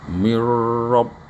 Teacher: Fad lam langsung di sini ada guna, ada di fatlam, nah didengung fatlam. Nah ini hukumnya nun ketemu ro itu idgham. Mirrob, nah, nunnya nggak perlu nunnya ini dilebur, jadi nunnya dilebur.